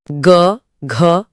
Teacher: सघोष या घोष ध्वनियां वो हैं जिन्हें बोलते टाइम हमारी स्वर तंत्रियां कस जाती हैं और गले में एक भारी वाइब्रेशन पैदा होता है। इसमें आते हैं वर्ग के तीन, चार और पांच नंबर वाले अक्षर।